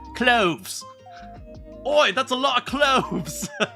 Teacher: pronounces their TH sound with an F sound